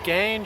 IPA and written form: ɡæn (The Ghan)